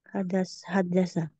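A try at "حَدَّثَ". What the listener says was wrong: haddasa. Ada tambahan tuh. Haddasa 4 huruf ya.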